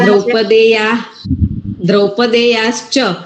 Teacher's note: ચ એ તાલવ્ય છે એટલે શકાર આવશે તાલવ્ય શ આવશે એટલે દ્રૌપદે યા અને વચ્ચે શ આવશે અને ચ દ્રૌપદયા હા